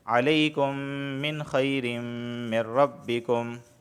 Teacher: میم ساکن کے بعد ایک اور میم آیا ہے تو یہاں ادغام شفوی مع الغنہ، ادغام بھی ہوگا اور غنہ بھی ہوگا۔